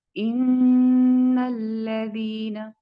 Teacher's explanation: इन्नल्लज़ीना, इसमें देखें कि इन के बाद जो लाम है इसको हम फौरन नून के साथ अटैच कर देंगे, और इसके दरमियान में जो अलिफ है वो स्किप होगा। इन्नल्लज़ीना, और लाम को पुर नहीं करेंगे।